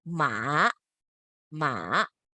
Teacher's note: now the third tone you go downwards